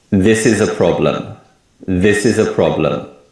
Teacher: we put more emphasis on the word this and the first syllable of problem. And other words and syllables become weak sounds. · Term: stress